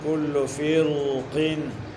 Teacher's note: قاف حرف استعلاء کی وجہ سے را ساکن ما قبل مکسور کو ہم پر پڑھ رہے ہیں